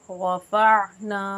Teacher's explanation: रफ़अना में रा पुर पढ़ी जाएगी, नून मद्दा है, इसको भी एक अलिफ के बराबर खींचेंगे।